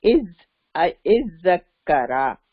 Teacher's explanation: اب یہ دو زال آ گیا تو پھر یہ ادغام ہو جائے گا